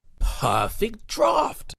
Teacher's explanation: And the P has largely, that first explosion of air right at the beginning has largely been faded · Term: plosive